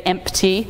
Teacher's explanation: we say empty, like with the P, but in Old English that P was not there, but that P has been inserted over time as a kind of a bridge between the M and the T.